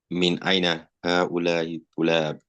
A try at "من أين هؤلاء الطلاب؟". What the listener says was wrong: Please take note of the pronunciation as well. There's supposed to be شدة. من أين هؤلاء الطلاب.